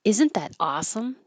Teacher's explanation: isn't that is not emphasized but awesome is